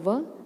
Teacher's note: व दंत और होठ दोनों से